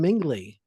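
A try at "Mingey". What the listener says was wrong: That's with a silent L. No, with an Maple Leaf L. There's no L in that name. There's no L in it.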